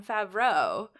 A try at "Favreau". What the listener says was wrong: No, that's more French than how he said.